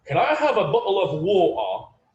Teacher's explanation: sometimes they don't pronounce the T's. Like they use like the glottal T all the time.